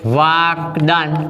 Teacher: અહીંયા ક છે અઘોષ છે અને દ છે એ ઘોષ વ્યંજન છે, માટે કના સ્થાને તેના વર્ગનો ત્રીજો વ્યંજન આવે તો શબ્દ બને વાગદાન.